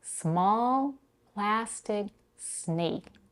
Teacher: in their written form all three A's are pronounced differently in small we have a vowel a as in father in plastic as in cat